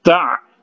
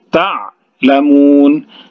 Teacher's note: Kemudian ta'lamun, ainnya dijalankan di kerongkongan kita.